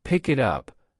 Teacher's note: the K in pick attaches to the I in it and the T in it attaches to the U in up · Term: linking